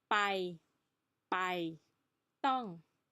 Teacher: the sound is neither B or P and this one is neither D or T